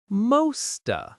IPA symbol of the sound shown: ə